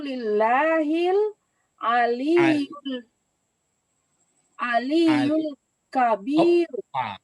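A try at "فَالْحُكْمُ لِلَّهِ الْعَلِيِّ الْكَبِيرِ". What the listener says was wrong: Kenapa lari ke yu? Tapi ini sifatnya nanti. Jadi fal hukmu lillahil aliyil kabir.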